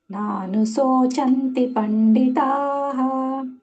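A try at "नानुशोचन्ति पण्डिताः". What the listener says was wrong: ನೀವು ಸ ಹೇಳಿದ್ರಿ ಸಣ್ಣ ಸ ದೊಡ್ಡ ಶೋ ಹೇಳಬೇಕು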